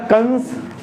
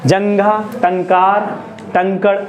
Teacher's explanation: अनुस्वार में हमारी सांस जो बाहर आएगी हवा जो बाहर आएगी कहां से आएगी नजल नाक से